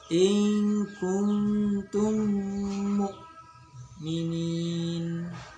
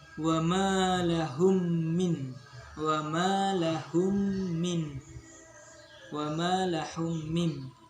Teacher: Hukum bacaan disebut idgham mimi apabila mim sukun bertemu dengan mim yang sejenisnya. Cara membacanya adalah seperti menyuarakan mim rangkap dan atau ditasdidkan dan wajib dibaca dengung.